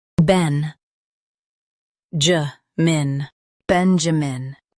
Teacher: Emphasize Ben and keep ja min light.